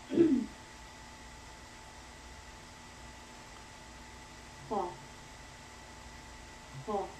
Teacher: in kha, we let the breathing flow.